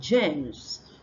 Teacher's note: there are people that don't have this sound J what they have is yeah so they exchange it for yeah they say they say y